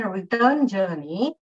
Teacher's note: When we say return journey, where am I stressing more on turn, not re?